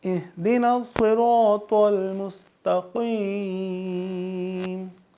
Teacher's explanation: صاد اور طاء دونوں حروف مستعلیہ ہیں، ان کو ہم پر پڑھیں گے، یعنی تھوڑا موٹا پڑھیں گے